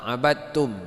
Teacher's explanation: maka di saat dal mati bertemu dengan ta, maka dal ini dimensohkan. Jadi tidak ada bunyi, dia langsung ke huruf ta.